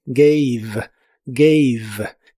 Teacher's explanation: La a de esta palabra se pronuncia como e y la e del final sigue sin pronunciarse